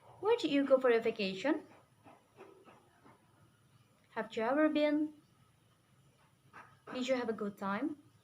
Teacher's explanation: you're asking questions to find out new information in this case you use falling tone